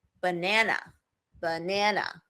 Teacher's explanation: So the first vowel is a schwa in banana, and that's a schwa. It's unstressed. Banana, and the last vowel is also a schwa in banana.